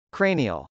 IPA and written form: krˈeɪn.iəl (cranial)